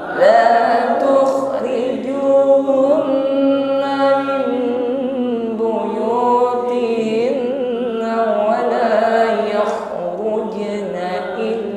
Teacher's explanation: ada gesekan di akar lidah dan dinding tenggorokan sehingga ada bunyi dengkur ya, sedikit ngorok tuh. Tapi di sini ngoroknya jangan ditekan ya, jangan ditekan terlalu kuat. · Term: huruf kha sukun